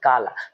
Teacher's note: बोलते समय हम का पर अधिक बल देते हैं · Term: वर्ण वाला घात